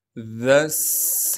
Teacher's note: ज़ाल को नरम करके बारीक करके पढ़ेंगे और ज़ाल को आगे सीन से मिलाएंगे इसलिए कि सीन पर तशदीद है। ज़ा सीन ज़बर ज़स।